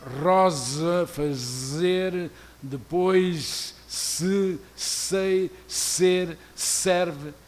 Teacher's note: a abundância e sucessão das fricativas alveolares sonoras e surdas